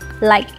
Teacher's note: nếu bạn không thích nối âm, bạn có thể bỏ âm k đi